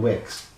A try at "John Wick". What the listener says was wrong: Wick. You said Wicks. It's not. John Wick.